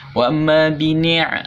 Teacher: ainnya ditekan di tenggorokan yang tengah.